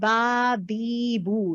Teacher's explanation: दो होंठ के मिलने से बा बी बू अदा होता है